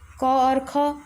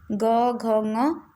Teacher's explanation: दो अघोष होते हैं शुरू के, क और ख, ये अघोष होते हैं। इसके बाद जो तीन बचते हैं ग घ ङ, ये क्या होते हैं, ये सघोष होते हैं।